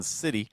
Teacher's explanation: So the first one, City, uses what is called a fast D sound or a flap T sound